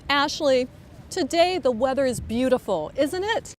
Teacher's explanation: notice how voice goes up when she says the tag question